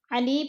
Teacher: یا مدہ کو بھی ہم نے 1 الف 2 حرکات کے برابر کھینچ کر پڑھنا ہے